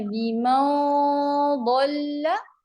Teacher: नून के मखरिज पे आपने जबान नहीं लगानी, सिर्फ गुन्ना अदा होगा नून का.